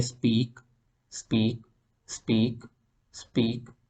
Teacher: इधर आप देखेंगे कि बहुत कम आपको जो है वो एयर फील हो रही है। और वो जो एयर फील हो रही होती है वो आमतौर पर ज़रूरी नहीं है कि वो पी की वजह से ही हो रही हो।